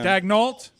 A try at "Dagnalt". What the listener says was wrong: Dagnalt. It should be Dagnalt.